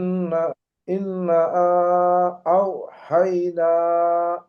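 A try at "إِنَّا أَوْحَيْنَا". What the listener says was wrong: হ্যাঁ দেখেন, এখানে নুনে গুন্না হবে, কিন্তু নুনের উপরে তাসদিদ, এটাও আমাদের গেছে। নুন আর মিমের তাসদিদ হলে,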